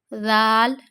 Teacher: زبان کا سرا اوپر کے دانتوں کے کناروں پہ، اندرونی کناروں پہ لگانا ہے ، یعنی نوک ہوتی ہے نا، نیچے ہمارے دانت اینڈ ہو